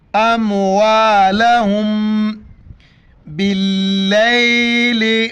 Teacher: میم ساکنہ، ناک میں آواز پیدا کرنی ہے